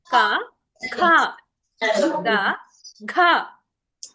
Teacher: కొంచెం ఒత్తు పలకండి మహా ప్రాణక్షరాలు కదా